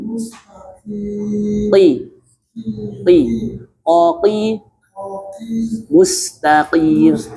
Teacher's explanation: Namun yang membedakan qof itu mempunyai sifat tebal karena pangkal lidah naik. Makanya bunyinya eng tapi tebal.